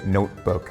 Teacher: in English you would say notebook like you would kind of like swallow that t a little bit